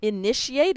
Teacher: it's just the T that says shh. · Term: sh sound